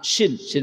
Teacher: tengah-tengah lidah ya wastul lisani Wa yuhadii Minal hanqil A'la Shin Shin besar dari tengah-tengah lidah bersanding dengan langit-langit bagian atas